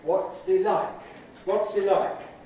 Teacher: weak form of he, no H, happy vowels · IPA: ˈwɒts i ˋ_laɪk_